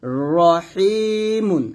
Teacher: আর রর উপরে জবর এবং রর উপরে পেশ থাকার কারণে রটাকে মোটা করে পড়ব। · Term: র মোটা